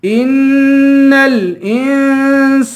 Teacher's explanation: ان الانسان سین کو ایک الف کے برابر کھینچ کے پڑھیں گے